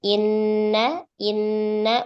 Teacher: Lalu suara terhenti dan semua lewat hidung. Nah, keluarnya dari hidung ini disebut khaisum ghunah.